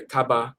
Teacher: even if you look at even Filipinos, they pronounce the V as a B.